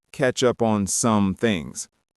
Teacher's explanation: The stress hits up and things. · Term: rhythm